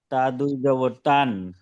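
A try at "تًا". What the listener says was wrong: তবে তা আলিফ দুই জবর তান এভাবে বলতে হবে। তার পরে কিন্তু আলিফ আছে, বায়ের পরে একটা আলিফ আছে সংযুক্ত। বা আলিফ দুই জবর বান, তা আলিফ দুই জবর তান এভাবে পড়তে হবে।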